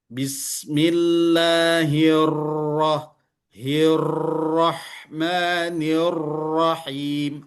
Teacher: Karena rnya terlalu banyak getarannya. Takrirnya terlalu banyak.